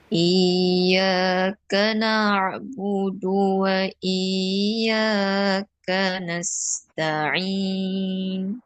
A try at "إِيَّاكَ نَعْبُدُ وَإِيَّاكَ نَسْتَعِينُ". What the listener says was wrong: Cuma dekat ka tu ternaik ni. Ternaik awal ni. Iyyaka nak tu baru tekan. Dekat nak tu baru kita naikkan. Boleh je nak naik dekat ka, tapi dia kalau dalam proses kita belajar ni, kita try ikut yang ni dulu.